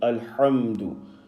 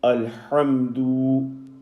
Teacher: Now over here, the incorrect way of saying it, alhamdu, overstretching a short vowel, which is u in this instance. The dal carrying a dhamma du.